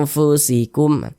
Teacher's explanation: Maka cara membunyikannya itu disamarkan kemudian juga didengungkan, akan tetapi kadar samar dan kadar dengungnya pun dia seimbang